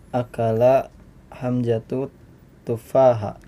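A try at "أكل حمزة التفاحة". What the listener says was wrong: At-tufaha ada alif lamnya ya situ. Atau disambung akala hamzatut tufaha.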